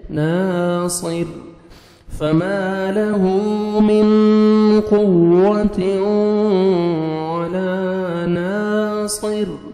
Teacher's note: صا زیر صی ناصر را دو زرن ناصر سٹاپ کریں گے را ساکن ہو جائے گا اور را کو باریک پڑھیں گے کیوں را ساکن سے پہلے زیر ہے